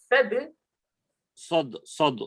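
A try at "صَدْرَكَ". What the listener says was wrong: मोटा बोल रहे हैं आप। सदरका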